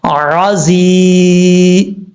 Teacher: یا ساکن سے پہلے زیر ہے، 1 الف کی مقدار، اس کو لمبا کر کے پڑھیں گے، عزی اس طریقے سے۔ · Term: یا مدہ